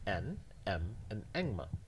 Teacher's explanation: they could form a natural class defined by the feature plus nasal quite simply because they're all nasal